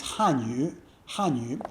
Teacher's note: So 语, third tone, is just another way of saying language.